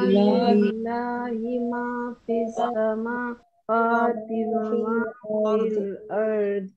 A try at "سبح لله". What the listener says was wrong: سبح ح کو صحیح کرے، سبح لله.